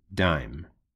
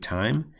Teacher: the voiced onset sound is dime I'm gonna select that the voiceless onset sound is time